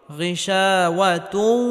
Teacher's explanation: হরফ ওয়াও আসার কারণে এখানে ইদগামে বাগুন্নাহ করে পড়তে হবে অর্থাৎ তানবিনকে ওয়াওয়ের সাথে গুন্নাহের সাথে মিলিয়ে পড়তে হবে